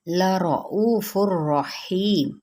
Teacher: لَرَؤُوفٌ الرحیم، لا را پر او مد صریح بالواو، الرحیم ادغام بلا غنہ یعنی بغیر الغنہ، غنہ کے بغیر۔ ہی پہ یا مدہ، میم پہ وقف کریں گے تو وقف بالاسکان۔